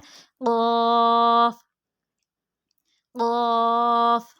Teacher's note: ज़ुबान की जड़ और तालु के नरम हिस्से से, ज़ुबान की जड़ और तालु के नरम हिस्से से अदा होता है।